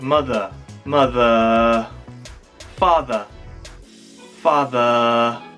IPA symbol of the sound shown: ə